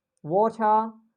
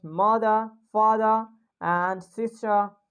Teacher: So whenever it comes after vowel letters, we just drop the R sound in the word.